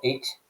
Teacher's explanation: of watered-down cockney accent so what you're going to get is dropping of h's at the beginning of words so instead of the word hit you've got it and you're